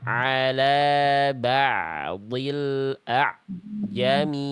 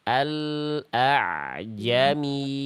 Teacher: ain sukun dengan huruf berikutnya enggak ada jeda, enggak ada jedah hening.